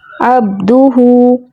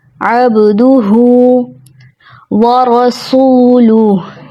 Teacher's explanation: با حرف قلقلہ میں سے ہے، جس کا مطلب آواز کا پلٹ کے واپس آنا